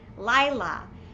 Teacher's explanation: you don't pronounce the hey at the end after an ah sound